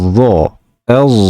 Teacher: ba'zi Mavron Nahr qorilari zo singari talaffuz qilishadi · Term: dod undoshini